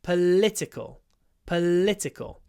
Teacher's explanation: political we've got a stretchy L